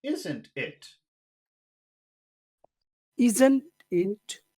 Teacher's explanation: Go from high to low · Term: high low